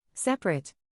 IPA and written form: ˈsɛp.ə.reɪt (Separate)